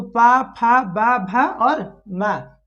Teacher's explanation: हम लोग पा बोलते हैं तो मेरा दोनों ओठ सटता है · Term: ओष्ठ